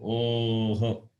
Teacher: Oho. O, it is labial, and visarga has got throat. So, oho goes like that.